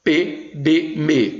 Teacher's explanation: Por exemplo, quanto ao ponto de articulação, os fonemas podem ser bilabiais, no caso, P, B, M. Veja que os lábios se encontram.